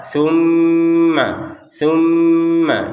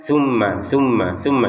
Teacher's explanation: Tumma mim bertasydid kita dengungkan dua harakat.